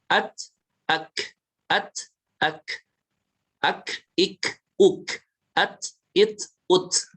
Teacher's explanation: hati-hati untuk bacaan yang hamas, tak sukun, kaf sukun itu jangan sampai ada tambahan suara e-nya